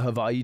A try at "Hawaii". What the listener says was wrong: Don't say it weird. You just made it a V.